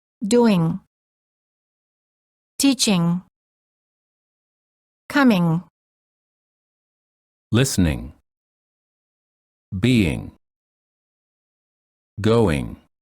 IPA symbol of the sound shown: ŋ